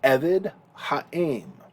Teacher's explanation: Eved, as a segulate, is often accented on the first syllable